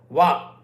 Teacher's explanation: వా అనేది దంతము పెదవులు కలిస్తే వస్తాయి